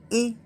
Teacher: अगर आप बोल के देख लीजिए कंठ तालव्य, कंठ ताल जैसे ए तो जैसे लग रहा गले, गला और ताल दोनों के संपर्क में जीभ आ रही है ना, गला और ताल। देखो ए गला और ताल दोनों के संपर्क में जीभ आ रही है, तो इसलिए क्या बोल रहे हैं कंठ तालव्य